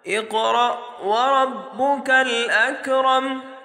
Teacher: اسی طرح را کو بھی موٹا پڑھیں گے، را کے اوپر زبر ہے اس را کو بھی موٹا پڑھیں گے۔ اسی طرح اس کاف کو جب ملائیں گے یہاں پر بالکل بھی جھٹکے کی آواز نہیں آنی چاہیے